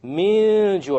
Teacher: We have a silent noon followed by a jim. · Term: Ikhfa